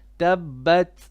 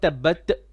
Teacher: On the ta, there's a bit of hams when you have a sakina on top.